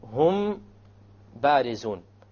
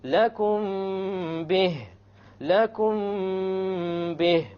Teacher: You have a meme followed by a ba, you make the ikhfa and you have a ghunna. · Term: ikhfa shafawi